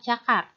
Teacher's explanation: Ceh merupakan bunyi tak bersuara. Contohnya pada kata cakar.